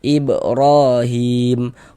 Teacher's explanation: Ibrahim, huruf ra memiliki harokat fathah nih, tanda baca fathah, maka huruf ra dibaca tabkhim, dibaca tebal. Sehingganya pangkal lidah kita naik terangkat ke atas ketika kita mengucapkannya.